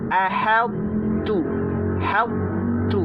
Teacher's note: Tetapi huruf ta atau huruf ta masih menyisakan sifat itbaqnya. Sehingga kita ucapkan ahadtu, hadtu.